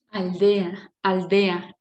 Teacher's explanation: el sonido sale por dos laterales